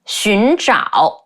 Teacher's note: 寻 the rising tone, 找 the falling rising tone.